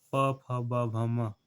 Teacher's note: प फ ब भ म, ये क्या है ओष्ठ वर्ग में आता है